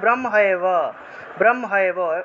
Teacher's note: অনেকে আছেন ব্রহ্ম এব এভাবে আলাদা আলাদা উচ্চারণ করেন, ব্রহ্ম এবং এব এই দুইটাকে একসাথে উচ্চারণ করতে হবে, কারণ এটা হলো একটা শব্দ। এখানে ভেঙে লিখে দেখিয়েছি, উচ্চারণের জন্য ভেঙে লিখে দেখানো হয়েছে, এখন ভেঙে লিখেছি বলে আপনারা আলাদা আলাদা উচ্চারণ করলে হবে না, এটা একটা শব্দ, সেজন্য ব্রহ্মৈব, ব্রহ্মৈব একসাথে বলতে হবে।